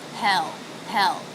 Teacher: Hell with the H consonant, the E vowel, and the dark L.